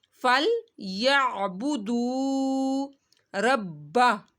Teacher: دو کو آپ نے یہاں پہ کھینچنا ہے، واو ساکن سے پہلے پیش آ رہا ہے تو واو مدہ کرنا ہے